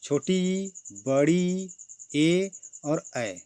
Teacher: ऐसे स्वर जिनके उच्चारण में जीभ का अगला हिस्सा कार्य करे उसे अग्र स्वर कहते हैं। इसके अंतर्गत छोटी, बड़ी, ए और ऐ को रखा गया है।